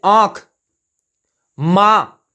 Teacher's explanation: अनुनासिक स्वर का मतलब हुआ इसमें ध्वनि नाक व मुख दोनों से निकलती है